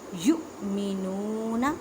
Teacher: حمزہ ساکن ہے، اس وجہ سے اسے جھٹکا دے کے پڑھیں گے۔ یؤمنون، واو ساکن سے پہلے پیش ہے تو واو مدہ کا قاعدہ کریں، مینس کے ایک الف کی مقدار میں کھینچ کر پڑھیں۔